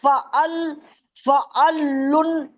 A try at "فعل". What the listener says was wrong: فعل نہیں ہے، فا عین زبر، فا عین زبر، فعل نہیں، عین کو کھینچنا ہے نا، علم کی عین کے ساتھ الف بھی ہے. فعل نہیں، فا، فا عین زبر، عین کو ڈبل پڑھنا ہے نا.